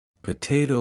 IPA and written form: pəˈteɪtoʊ (Potato)